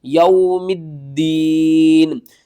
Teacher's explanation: وقف کی صورت میں نون کو ساکن کریں گے۔ ساکن اس حرف کو کہتے ہیں جس حرف کے اوپر جزم آ جائے اور نون کے نیچے تو زیر ہے، ہم زیر کو ختم کریں گے، نون کو جزم کے ساتھ پڑھیں گے۔